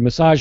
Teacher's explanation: I'm really hitting that second syllable uh in the second word massage